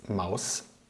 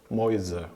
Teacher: it turns into a sharper S it's Maus but when I have the plural its Mäuse which is the softer one